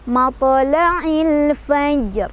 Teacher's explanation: Karena ada alif lam bertemu dengan huruf qamariyah yaitu fa. Cara bacanya alif lamnya dibaca jelas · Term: alif lam qamariyah